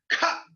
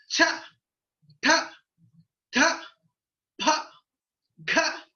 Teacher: ఖ అంటే బయటికి బాగా గాలి వస్తుంది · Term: మహాప్రాణాలు